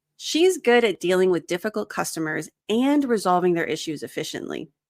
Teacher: I emphasized and. So I'm trying to say she's got double the skills. It's not just dealing with them, but she also resolves their issues.